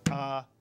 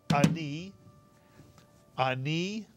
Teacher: it's one syllable the ah is like a grace note